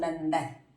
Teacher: નંદનમાં અનુસ્વારની પછી દ છે, દ ત વર્ગનો છે. ત વર્ગનો અનુનાસિક ન છે એટલે બોલવાનું નંદન.